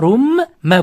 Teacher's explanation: Rum sukunlik nun harfidan so'ng b harfi kelib qolsa, sukunlik nun harfini m ga o'zgartirib ozgina g'unna bilan o'qiymiz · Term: Iqlob qoidasi